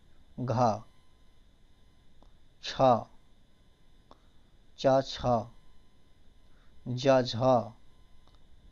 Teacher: इनको बोलने पर क्या हो रहा है मुख से अधिक आवाज निकल रही है तो इन्हें हम महाप्राण कहते हैं